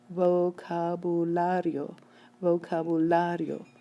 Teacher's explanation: This word ends in a vowel. It should be stressed on the next to last syllable. It is. The stress came on the la.